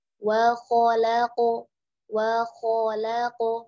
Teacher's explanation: kho nya tebal, lamnya tipis, qaf nya tebal ya